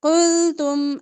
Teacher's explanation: قلتم باریک قاف موٹا باقی حرف باریک